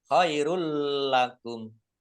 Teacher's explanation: Lamnya dibaca double tetapi tidak mendengung. Ditandai dengan ada tasdidnya. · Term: idgham bila gunna